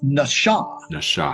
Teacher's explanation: It's a SH sound. It's not an S sound.